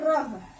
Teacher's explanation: लुंठित व्यंजन आ रहा है, मतलब जीवा पलट जा रही है।